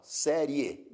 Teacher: oral quando o som som sai totalmente pela boca veja que quando você pronuncia a palavra série ainda que você esteja com o nariz tapado você pronuncia essa palavra sem obstáculo nenhum não há Nenhum obstáculo na pronúncia dessa palavra ó série